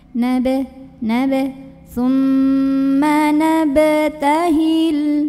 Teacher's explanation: Maka cara membunyikannya adalah dipantulkan ba-nya ini dengan pantulan yang kecil dan dialirkan ya pantulannya, jangan seperti orang kaget ya. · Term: qalqalah sughra